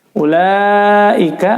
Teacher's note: perhatikan di sini u-nya tidak dibaca panjang ya, karena dummah tidak diikuti waw sukun. Ini waw tanpa sukun ya, berarti tidak dianggap ada.